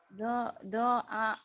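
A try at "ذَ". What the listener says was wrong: Zo bukan do, zo agar aku.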